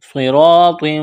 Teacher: را، صاد اور طا کو موٹا کرنا ہے، را کے اوپر زبر ہے، یہاں الف مدہ ہے، ایک الف کے برابر کھینچنا ہے.